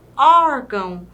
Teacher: Percebam aqui que na palavra órgão nós temos aqui o acento agudo, indicando aí que o O é mais aberto e também essa sílaba, a junção do O com o R, é uma sílaba tônica, mas também temos aí o tio no gão, que é uma sílaba átona no caso dessa palavrinha, tornando aí a palavra órgão.